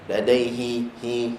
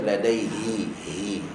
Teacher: makhraj ha adalah kerongkong bukan hidung